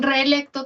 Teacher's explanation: En reelecto también separo mis dos vocales abiertas. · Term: hiato simple